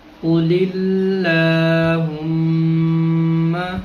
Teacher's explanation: اللہم سے پہلے لام ہے اور لام کے نیچے زیر ہے، تو لفظ اللہ کے لام، اللہم کے لام کو باریک پڑھیں گے